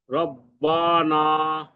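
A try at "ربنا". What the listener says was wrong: বাতে টান নাই রব্বানা বাতে ধরবেন রব বাতে ধরে রব্বানা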